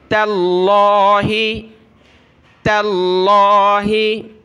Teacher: اگلی آیت دیکھیں، تا کو ملائیں گے لفظ اللہ کے ساتھ. لفظ اللہ کو موٹا کرنا ہے کیونکہ تا پر زبر ہے، لیکن تا نقطے والی جو ہے اس کو ہم نے باریک کر کے پڑھنا ہے.